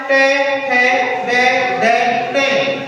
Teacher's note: वे वर्ण जिनका उच्चारण करते समय हमारी जिह्वा किसको? मूर्धा को स्पर्श करते हुए प्राणवायु को बाहर की ओर निकालती है।